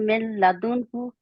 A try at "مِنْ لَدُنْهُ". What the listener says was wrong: نہیں، نون کو نہ بولیں آپ بیچ میں. ملا ملا ڈائریکٹ ملا ہے، کیونکہ لام اور را کے اوپر ادغام گننے کے بغیر ہوتا ہے نا.